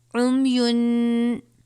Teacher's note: تنوین کے بعد حروف اخوا میں سے فا آیا ہے، غنہ کریں گے